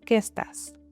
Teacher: The e at the end of qué joins with the e at the beginning of estás and sounds like one sound. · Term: connected speech